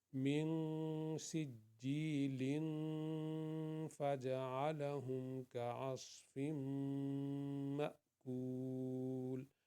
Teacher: سجیلن، یہ تنوین ہے، اس کے بعد فا آ گیا ہے، تو اس لیے ہم نے یہاں پہ گنہ کر دیا